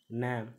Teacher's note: நாவின் நுனி மேல்வாய் அன்னத்தின் முன்பகுதியை தொடுவதால் பிறக்கும் எழுத்து